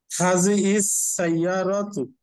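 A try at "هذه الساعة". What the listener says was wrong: ইয়ারাতু কেন? সাআতু, হাযিহি সাআতু।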